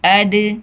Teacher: دال بھی حروف قلقلہ میں ہے، اس میں بھی آواز پلٹ کر آئے گی. اد، دیکھیں اس کو روکنا نہیں ہے.